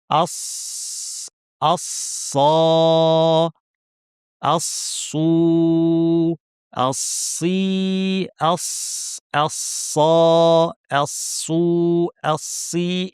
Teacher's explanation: যে শীর্ষটা একই জায়গায় লেগেছে অর্থাৎ নিচের পার্টটি দাঁতের গোড়ায় কিন্তু জিহ্বার মাঝখান এবং পেছন উঠিয়ে আমরা আওয়াজটাকে উপরে ঠেলে দিলাম ফলে আমরা একটা ভারী আওয়াজ পেলাম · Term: সদের আওয়াজ